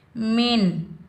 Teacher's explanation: आगे हा हरूफ़ हल्की में से आ रहा है तो नून का इजहार होगा। नून पर हम ना गुन्ना करेंगे ना इख्फा करेंगे, नून की आवाज़ को हम ज़ाहिर करेंगे, बगैर खींचे पढ़ेंगे।